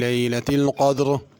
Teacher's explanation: لیلۃ القدر اس میں قاف موٹا ہے، اس کو پر کر کے پڑھنا ہے، اور را کو بھی پر کر کے پڑھنا ہے اگر اس آیت پہ رکنا ہو، اور اگر ملا کے پڑھنا ہو تو پھر را باریک ہوگی۔